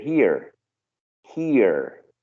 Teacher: Yes, in American there's an R at the end.